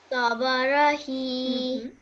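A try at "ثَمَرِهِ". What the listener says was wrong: Okay, this ra has a kasra underneath it. Okay, so it's a ri, not a ra. Samarihi. Look at this letter. This is the letter ra. Okay, and what does it have underneath it? So how would you just pronounce this letter? Tell me how you would pronounce this bit.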